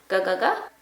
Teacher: we're using the back of the tongue towards the back of the mouth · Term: ga sound